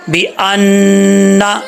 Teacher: یہ نون مشدد ہے تو اس کو غنہ کریں گے، اچھا یہ الف نہیں ہے، یہ حمزہ ہے، ٹھیک ہے، حمزہ نون زبر ان، نون زبر نا، انا، بِأَنَّا، ٹھیک ہے۔